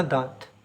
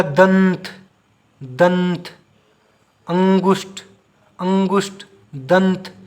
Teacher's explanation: जब आप चंद्र बिंदु को बोलोगे ना, नाक से कम मुंह से ज़्यादा। लेकिन जब आप अनुस्वर, अनु, तो नाक से ज़्यादा और मुख से कम।